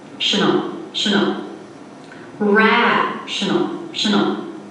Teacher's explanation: notice how it's much quieter lower in Pitch very fast maybe it even sounds a little muddled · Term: unstressed syllables